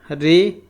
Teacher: अब मुरधन्य जो होता है मूर्धा से बोला जाता है।